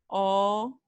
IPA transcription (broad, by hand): ɔ